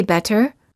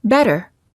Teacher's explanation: when a t is between two vowels it's generally pronounced like a fast d sound · gum this sound is also sometimes called a tapped t because you quickly tap the tip of the tongue on the gum ridge